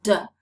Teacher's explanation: you can perceive that the vocal chords are vibrating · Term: voiced